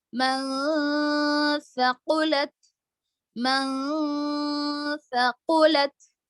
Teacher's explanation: نون کی آواز کو ناک میں چھپائیں گے، جیسے من پڑھیں گے.